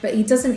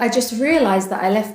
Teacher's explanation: When a word ends with a T and is followed by a word beginning with a consonant, the final T of the first word is often silent or sounds like a D